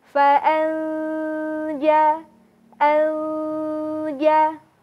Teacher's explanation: ketika nun sukun bertemu dengan huruf jim maka akan terdengar bunyi yang samar dari huruf nunnya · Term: bunyi nunnya disamarkan